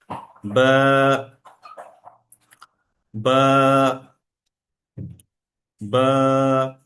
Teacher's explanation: আমি বাতে টান থামিয়ে দেইনি বরং টানকে লম্বা করেছি এবং লম্বাটা এমন লম্বা না যে লম্বাটা খুব দীর্ঘ মনে মনে হচ্ছে হালকা লম্বা তাহলে এই টানটা কি স্বল্প টান